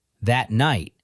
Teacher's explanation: the T of that barely registers